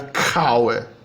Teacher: Já se você grafar a palavra com uma consoante surda, essa consoante surda é aspirada. Então uma palavra começa com K, é pronunciada com o K seguido de uma aspiração, não som de H